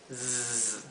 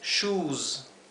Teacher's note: Pero cuando la S se encuentra al final y está precedida por una vocal, como es este caso y muchos otros más, la S se pronuncia fuerte, con el zumbido